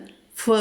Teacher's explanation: പ്രകാശന വിസർഗം കഴിഞ്ഞിട്ട് പാ വന്നതുകൊണ്ട് അവിടെ നമ്മൾ ഫ് എന്ന് ചൊല്ലണം. ഉപദ്മാനീയം കേട്ടോ, ഫ് ചൊല്ലണം.